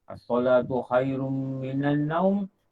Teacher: Khairum tu ada dengung, minan ada dengung, naum.